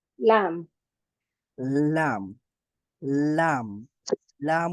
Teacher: লাম উচ্চারণ করার সময় আমাদের জিহ্বার অগ্রভাগটা সামনের উপরের যেই আটটা দাঁত আছে এই আটটা দাঁতের গোড়ালির সাথে লাগবে